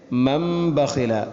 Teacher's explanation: സുക്കൂനുള്ള നൂനിന് ശേഷം ബ എന്ന അക്ഷരം വന്നാൽ ഇഖ്ലാബ് എന്ന നിയമമാണ് ചെയ്യേണ്ടത്. ആ നൂനിനെ മീമാക്കി മാറ്റുന്നു.